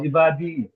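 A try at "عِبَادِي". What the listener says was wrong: আপনি টান দেবেন তো। যেগুলো টান আছে সেগুলো টান দেবেন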